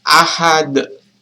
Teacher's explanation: huruf dalnya itu seakan-akan memantul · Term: Qalqalah kubra